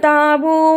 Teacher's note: تابو، اسے تبو نہیں پڑھنا، تا کے ساتھ الف مدہ اور با کے ساتھ واو مدہ ہے، اسے تابو پڑھتے ہیں۔